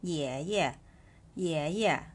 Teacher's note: ตัวyถือว่าเป็นพยัญชนะกึ่งสระนะคะในที่นี้จะออกเสียงเหมือนตัวIก็คือเสียงอีนั่นเองค่ะ เพราะฉะนั้นตัวนี้นะคะเสียงจะคือEกับเอะตัวEตัวนี้จะไม่ได้ออกเสียงเออนะคะเป็นออกเสียงเองค่ะพินอินตัวนี้จะผ่านว่าเสียงที่2นะคะก็จะเป็นเสียงเบาค่ะสังเกตนะคะไม่มีวรรณยุกต์อยู่บนตัวEค่ะตัวนี้จะออกเสียงแค่ครึ่งเดียวนะคะอ่านว่าไม่ต้องใส่วรรณยุกต์ให้ตัวที่2ค่ะคุณปู่ค่ะฝึกจำตัวอักษรแล้วก็พินอินไปด้วยนะคะ